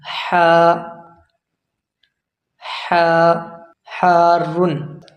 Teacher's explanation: یہ حرف نکلے گا حلق کے اندر سے، جس طرح ٹھنڈا پانی پینے کے بعد سانس لیتے ہیں نا ٹھنڈی، اسی طرح یہ حرف نکالنا ہے